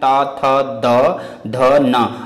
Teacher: दंत से त वर्ग का उच्चारण होता है